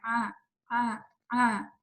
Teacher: अगर आप पानी पिए और जहाँ पे जाके वो स्वॉलो आपको लगे कि फील हो कि अंदर उतर रहा है, तो वो एग्जैक्टली आयन की जगह है। अगर आप अपनी 2 उँगलियाँ उस जगह पे रखें जब आपको फ़ील हो कि पानी वहाँ से उतर रहा है, तो वहाँ पे पुश करके आयन की प्रैक्टिस करें।